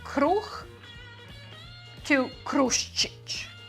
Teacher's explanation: you have this vocal change from H to esh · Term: palatalizacija